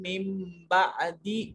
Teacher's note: ثم عفونا عنکم من بعد، عنکم میں کاف کو دوسرے میم سے ملائیں گے، یہ پہلا میم جزم والا ہے، دوسرا میم مشدد ہے، پہلے میم کو چھوڑ دیں گے، دوسرے میم کو پڑھیں گے، اور یہاں پھر دیکھیے نون ساکن ہے اور اس کے بعد با ہے تو یہاں چھوٹا میم پیدا ہوگا اور پہلے اس میم کو اس چھوٹے میم کے ساتھ ملا کر پڑھیں گے۔